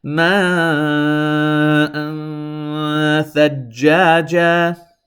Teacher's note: I am holding this an sound in my nose a little bit because the letter immediately following is tha. Therefore, it is one of the 15 letters of Ikhfa.